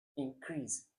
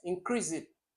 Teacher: So increase has the stress on crease, the second syllable, because it's an action word.